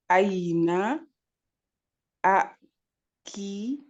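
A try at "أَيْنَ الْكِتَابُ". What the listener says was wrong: Non, il n'y a pas de A. C'est comme s'il n'existait pas. Parce qu'avant, il y a un mot. Le kitab. Aïna le kitab.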